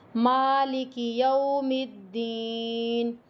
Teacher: یو کی آواز بھی نہیں آنی چاہیے، یہاں پہ حروف لین ہے